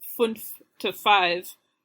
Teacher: And then when you go from fünf to five, you sort of take the voicing of the N and the F at the end of fünf and smush them together and get a V sound for five